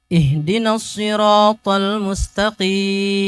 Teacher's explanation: kita enggak pakai irama turun di akhir ya karena sekali lagi rumus kita datar sedikit naik